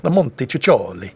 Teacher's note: if you have a double C in Italian, that's pronounced with a sort of ch sound